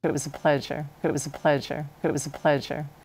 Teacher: The A in A is pronounced as a quick schwa because it's unstressed and a consonant follows it.